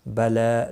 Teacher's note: لام کے اوپر کھڑی زبر ہے، ایک الف کے برابر کھینچ کر پڑھیں گے